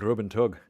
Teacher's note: do you want a trilled R on that, like rub and tug?